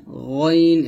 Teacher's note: কণ্ঠনালীর শেষ ভাগ হইতে আওয়াজটাকে মোটা করে উচ্চারণ করতে হবে